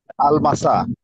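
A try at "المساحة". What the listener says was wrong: আল, না, ওই সিনটাকে একটু জোর দিয়ে বলতে হবে। আল মাসাহ। আল মাসাহ।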